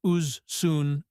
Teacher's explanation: When we compare things, as becomes uz.